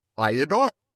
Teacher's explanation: So I adore, we slip a little Y sound in there.